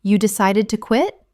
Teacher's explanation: For instance, if a friend says, "I finally decided to quit my job yesterday." You might simply mirror them by saying, "You decided to quit." Utilizing a rising intonation, this invites them to elaborate on their reasons.